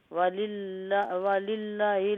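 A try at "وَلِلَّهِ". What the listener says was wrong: وللہ لمبا تو کریں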